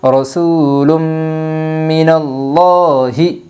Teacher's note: یمن کے 4 حرفوں میں سے میم آئی ہے، اس لیے دو پیش تنوین کو غنہ کے ساتھ ملا کر پڑھے گے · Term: ادغام مع الغنہ